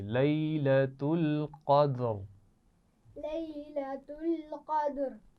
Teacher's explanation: قاف موٹا ہے قدری میں اور دال پر قلقلہ ہے.